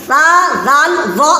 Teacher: زبان کی نوک اور اوپر کے سامنے والے دو دانت کا کنارہ مل کر سا زال وا ادا ہوتا ہے